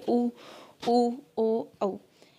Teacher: जब आपका जो होंठों की स्थिति है वो एक सर्कुलर शेप बन जाए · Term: व्रतमुखी